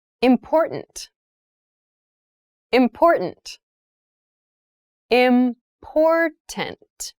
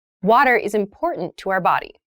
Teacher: that first t is actually reduced it sounds more like a d in fast speech